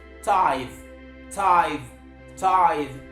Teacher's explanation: And that is because the last consonant sound in the transcription of that word is the voiced interdental fricative and not the voiceless alveolar plosive